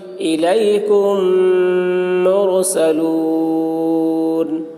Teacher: میم ساکن کے بعد میم آ رہا ہے اس لیے میم کو میم کے ساتھ ملا کر غنہ کے ساتھ پڑھیں گے، اس کو ادغام شفوی کہتے ہیں۔